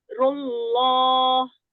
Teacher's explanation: jalalah yang di ayat pertama didahului oleh dhomah maka dibaca tafkhim